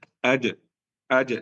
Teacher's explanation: Jadi jim, kalau keluar dari makhrajnya yang benar, kalau tengah lidah bertemu tengah langit, kuat, tidak bisa mengalir. Jadi tertahan. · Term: jim yang benar